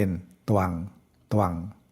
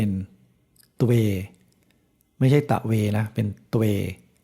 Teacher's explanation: ตเต่าไม่มีอะไรก็ออกเสียงครึ่งเดียวเพราะฉะนั้นจะไม่อ่านว่าตะวังก็จะอ่านเป็นตวัง